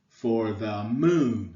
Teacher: two unstressed syllables followed by a stressed syllable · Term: anapest